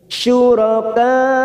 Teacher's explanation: mat yang bertemu dengan hamzah dalam satu kalimat, mat wajib mutasil 4 harokat kita panjangkan.